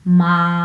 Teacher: এটা হচ্ছে first tone বা প্রথম টোন। আমি যদি বাংলায় বলি, এটি উচ্চ এবং সমতল